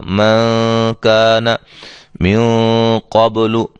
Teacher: نون ساکن کے بعد ان حروف میں سے کاف آ گیا ہے، ہم اس پہ غنہ کریں گے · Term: اخفا